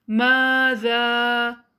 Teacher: ماذا، ذال کے لیے زبان کی ٹپ دانتوں سے باہر رہے، جتنا لمبا آپ میم کو کھینچیں گے اتنا ہی لمبا ذال کو کھینچیے۔